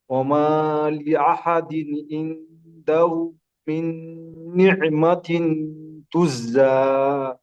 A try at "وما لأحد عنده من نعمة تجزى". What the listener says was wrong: তুজ আপনার জাটা আগে হয়ে যাচ্ছে, জিমটা পরে হচ্ছে, সেই জন্য জিমটা আগে হবে, জাটা পরে হবে। তুজ তুজ তুজ জি জা, যা নাই, যা, দ্বিতীয়টা যা। জি ওইটা দ্বিতীয় হবে, আর প্রথমটা জিম হবে। তুজ।